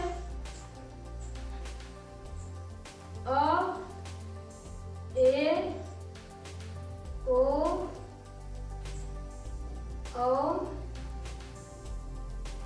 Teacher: अर्धविवृत means half open, खुला हुआ, हमारा मुख का द्वार आधा खुला हुआ,